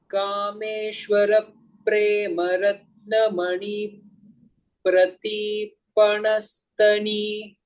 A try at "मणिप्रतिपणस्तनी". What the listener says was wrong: So mani prati, that has gone dirgha, no? Make it short. Mani pratipanastani.